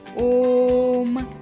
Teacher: ओ को हमने खींचकर बोला यानी की बहुत लंबी ध्वनि यहां आई और से तो उसके आगे हमने तीन का जो चिन्ह है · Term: पलट स्वर, प्लुत स्वर